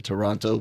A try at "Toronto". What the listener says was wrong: You got to say Toronto. You can't pronounce the second T. Toronto.